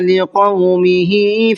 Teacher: ہا کو کھینچ کر کے پڑھنا ہے اس لیے کہ ہا کے نیچے کھڑا زیر ہے۔